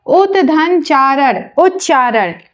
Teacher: यदि ता के बाद च अथवा छ छतरी वाला छ आए तो ता आधा च में परिवर्तित हो जाता है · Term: व्यंजन संधि